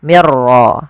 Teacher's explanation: nun sukun bertemu ra, maka kita namakan dengan idgham bila gunnah. Hanya masuk saja nunnya kita masukkan ke ra, dihilang awalnya min rabbikum, karena ketemu ra diganti mir ra langsung.